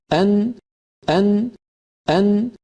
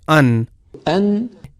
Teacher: مثال کے طور پہ ہم میں جب کوئی کہتا ہے کہ ال، ال، ال، اور پھر کہتا ہے ان، أن وہ تھوڑا نیچے ہے اس جگہ جہاں لام کے لیے زبان لگتی ہے، لہٰذا نون اس طرح ادا ہوتی ہے کہ زبان کا ابتدائی اوپر والا حصہ اپنے بالمقابل مسوڑوں کو جو لام کے مخرج سے تھوڑا سا نیچے ہے لگنا چاہیے، اور ساتھ ناک سے بھی آواز گزرے۔ یہ دونوں چیزیں مل کر نون کو تشکیل دیتے ہیں اور یہی نون کا مخرج ہے۔